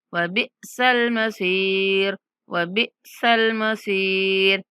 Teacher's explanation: बा के बाद साकिन हमजा है, साकिन हमजा को झटके के साथ पढ़ेंगे।